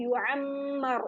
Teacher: मीम पे गुन्ना किया है और रॉ को मोटा पड़ा है, रॉ पे जबर है।